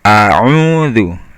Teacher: a'udzu yang pertama a biasa, yang keduanya ain. U-nya dua ketukan. A'udzu, zal itu ujung lidah ketemu ujung gigi atas, kemudian ucapan zu, bibirnya dibulatkan, dimonyongkan biar bunyinya zu ya.